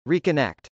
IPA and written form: rikənˈɛkt (reconnect)